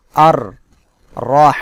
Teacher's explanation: র এর উপরে জবর থাকায় র মোটা করে পড়তে হবে এর উপরে যদি জবর বা পেশ থাকে তাহলে র মোটা করে